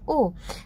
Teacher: पूरा मुंह नहीं खुलता है और फिर बोलते हैं ओ तो ओ में भी पूरा मुंह नहीं खुलता है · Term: अर्ध विवृत